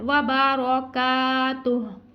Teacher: व बा रा के ऊपर ज़बर है हमने, फिर इसको पुर पढ़ना है, इस काफ को हमने बारीक अदा करना है और अलिफ से पहले हर पर ज़बर अलिफ मद्दा को खींचना है